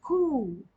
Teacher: the deep part of your tongue is touching the end of the roof of your mouth. Ku, ku. And then oh, you can see your, you can feel your soft part and the deep part of your tongue is touching.